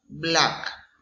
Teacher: Consonant B, example black. It's bilabial plosive.